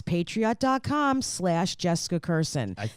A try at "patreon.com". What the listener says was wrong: I think you said patriot.com.